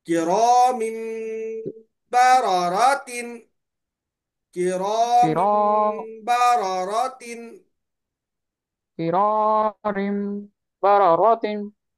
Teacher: کرا بولے تو را باریک ہوتا. را پہ زبر رہنے کی وجہ سے را کو موٹا پڑھیں گے